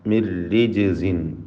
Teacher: മിൻ എന്നതിലെ സാക്കിന നൂൻ റായിലേക്ക് ലയിപ്പിച്ച് മണിക്കാതെ ഉച്ചരിക്കുക. ഇത് ബിഗൈരി ഗുന്ന, മിർ റിജ്സിൻ.